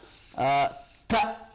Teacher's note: You know the vocal cords here in the larynx. When I make a sound like ta, the vocal cords are wide apart